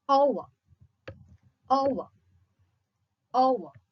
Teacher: a glide from a central unrounded vowel between half close and half open to a back rounded vowel